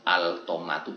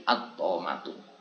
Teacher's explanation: harus kita idghamkan lamnya, kita masukkan ke to menjadi at-tomatu.